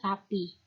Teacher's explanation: Frikatif yang dapat ditemukan pada tabel A merupakan frikatif alveolar yang berbunyi s. S merupakan bunyi tak bersuara. Contohnya pada kata sapi.